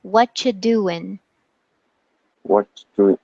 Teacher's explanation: we drop the ing and we just say in